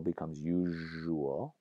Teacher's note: The z to zh, as seen in usual, becomes usual with a zh there